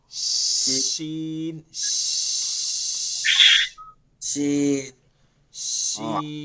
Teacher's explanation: যা শিন হ্যাঁ, শিন আর বড় শিনটা থেকে হবে বড় শিন শিন না, মানে তিন নুক্তাওয়ালা, এটা হচ্ছে হ্যাঁ জিহ্বার মধ্যখান উপরে তালুতে, ও, মধ্যখানটা তালুতে গিয়ে লাগবে। শিন মধ্যে একটা শীষের ভাব থাকবে, শীষ, যেমন বাতাস হইলে বন্যা একটা শ শ ভাব থাকে, ঠিক সেরকম। শিন শিন শিন ও শিন।